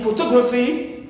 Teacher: So phi not stressed. Gra, not stressed, but to is stressed. Third from the end.